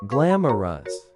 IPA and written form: ˈɡlæmərəs (glamorous)